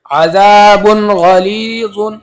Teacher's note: اس تنوین کو ظاہر کر کے بغیر گنہ کے جلدی پڑھیں گے · اب یہاں پر دیکھ لیجئے تنوین کے بعد حروف حلقی میں سے غین آیا ہوا ہے، تو اس تنوین کو ظاہر کر کے جلدی پڑھیں گے بغیر گنہ کے، اس کو اظہار کہتے ہیں.